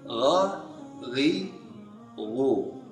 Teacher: Tidak termasuk huruf hamas, jadi tidak boleh ada udara yang mengalir. Kalau udara sudah mengalir, berarti sudah dekat kepada huruf kha. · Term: huruf gha